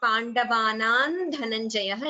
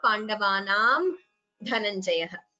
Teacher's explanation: you can combine the sandhi and chant it as Pandavanan Dhananjayah instead of Pandavanam Dhananjayah